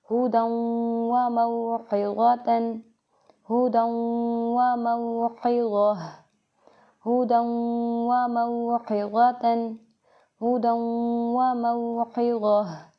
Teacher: इदगाम मअल गुन्ना, यानी मिला के गुन्ना के साथ पढ़ें।